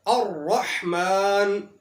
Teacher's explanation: تو الرحمن کے اندر را کے اوپر زبر ہے، یہاں پر را کو موٹا پڑھا جائے گا۔